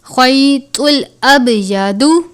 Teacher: پہلے زبر ہے، یا لین ہے، خوا کو پر بھی پڑھیں گے کیونکہ خوا حرف مستعلیہ میں سے ہے